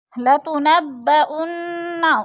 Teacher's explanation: انّ کی نون مشدد ہے، سختی سے جمع کر پڑھیں گے